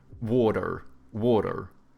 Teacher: they have like soft T's and then they pronounce their R's